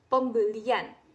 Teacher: bahwasanya ketika kita mengucapkan pembelian itu kita seakan-akan mengucapkan Y di dalam mulut kita, bukan pembelian tapi pembelian gitu.